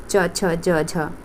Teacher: जीभ लग रही है तालु पे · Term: च वर्ग